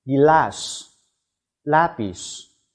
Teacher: 发音时舌尖抵住上齿龈较后部分，舌背抬向硬腭形成狭长通道，气流通过时摩擦成音